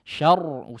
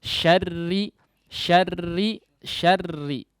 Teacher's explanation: Dia tetap menjadi tipis meskipun bertasydid, kemudian samarkan getarannya, samarkan sifat takrirnya.